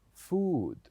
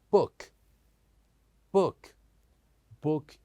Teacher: food is longer but when we say book book is shorter